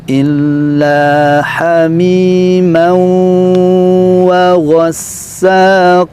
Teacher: Ya, di sini illa ditekan, ada tasydidnya, hamimau kembali idgham bi gunnah. Tanwin dileburkan ke huruf waw dan ditahan, bacaan dengungnya selama 2 harokat.